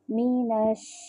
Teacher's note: شین میں جو ہے وہ شاورنگ ساؤنڈ آتی ہے، مینش، اس طرح سے، اش، مینش شیطان الرجیم۔